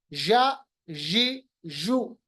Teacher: यहाँ पर जीम, शीन, या, जीम, शीन, या, जबान का दरमियानी हिस्सा या वसतुल लिसान, जबकि मिले ऊपर के तालु के साथ। वसतुल लिसान को जब हम ऊपर के तालु के साथ मिलाते हैं तो हमारे पास 3 हरूफ अदा होते हैं · pronounced from the middle of the tongue and the middle of the प्लेट, यानी ऊपर का हिस्सा जो दरमियानी है वो, और मिडल ऑफ द टंग जिसको वसतुल लिसान कहते हैं। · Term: मखरज नंबर 6